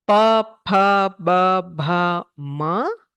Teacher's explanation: you need both lips, oshtau. So the lips come together and press against each other to pronounce these letters.